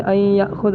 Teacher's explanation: اسی طرح نون کا یا میں، جیسے این یأخذ، نون کا یا میں جیسے این یأخذ، یہاں پر بھی نون کی آواز تھوڑی باقی ہے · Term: ادغام ناقص